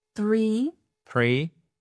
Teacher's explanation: Vous avez ce premier son qui dit le soft th où quand vous posez vos mains sur les cordes vocales en fait ça ne tremble pas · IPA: /θ/